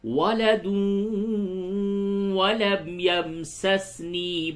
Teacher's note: تنوین کے بعد واو ہے، یہاں پہ ادغام مع الغنہ ہوگا